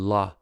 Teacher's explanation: the tip of the tongue touches the ridge but the sides of the tongue do not touch anything so air flows out around the sides of the tongue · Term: liquid